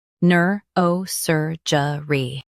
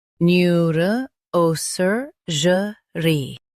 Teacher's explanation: In US, stress sur. In UK, stress o.